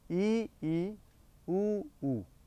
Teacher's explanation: जैसे आप उच्चारण करके देखेंगे ई, ऊ, ई में क्या है, हमारा मुख थोड़ा सा बंद होने के कगार पे, ई, ऊ में होठ जरूर गोल होंगे, लेकिन हमारा मुख समृत सिकुड़ता हुआ है। ई, ऊ का उच्चारण करेंगे तो निश्चित रूप से मुख कुछ सिकुड़ता हुआ है, कम खुलता है। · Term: समृत स्वर